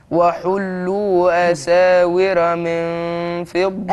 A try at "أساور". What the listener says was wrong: أساور مش را. الراء مفتوحة عندك هتبقى مفخمة.